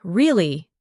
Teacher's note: For example, when you ask a question like, "Really?" your voice goes up slightly at the end. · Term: intonation